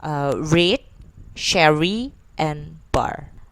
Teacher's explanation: R, which is retroflex approximant. It has initial, middle, and final.